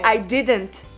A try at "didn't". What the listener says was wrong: It's because you pronounce all the silent T's. No, it's didn't. Your husband is right. You swallow it. You drop it. You drop it.